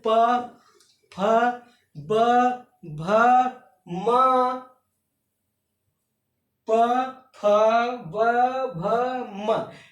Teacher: ओष्ठ जैसे प फ ब भ म, प फ ब भ म, इन शब्दों को बोलते समय हमारे ओठ आपस में स्पर्श कर रहे हैं, आपस में छू रहे हैं, इसलिए इनका उच्चारण स्थान ओष्ठ।